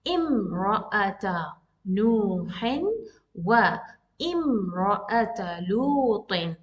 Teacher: we will pronounce this hamza, the sound of a. One count.